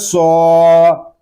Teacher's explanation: صاد کھڑا زبر سو، وعملس سو، صاد یہ حروف مستعلیہ میں سے ہے، اس کو پور یعنی موٹا پڑھیں گے